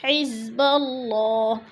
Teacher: اللہ سے پہلے لفظ با کے اوپر زبر ہے، اللہ کو پر کر کے پڑھیں گے